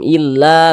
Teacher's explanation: sehinganya la dibaca panjang Mad Thobi'i panjangnya dua harakat